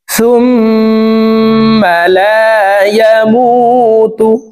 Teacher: দেখুন হরকতের বামে মিমের উপরে তাসদিদ আছে, এই কারণে এই পেশওয়ালা সাটি তাসদিদওয়ালা মিমের সাথে 3 সেকেন্ড পরিমাণ গুন্নাহ করে ধরে রাখবো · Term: ওয়াজিব গুন্নাহ